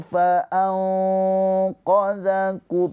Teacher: nun sukun bertemu dengan huruf qof ikhfa hakiki ditahan dua harakat